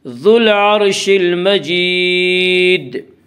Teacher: المجید میں مد عارض وقفی ہوگا